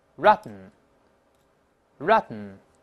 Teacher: 读快了之后，ten▁是鼻腔爆破